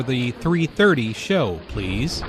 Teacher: Notice the emphasis on 3:30.